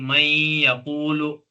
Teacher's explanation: वहां पर नून की आवाज को या में मिलाया गया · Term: इदगाम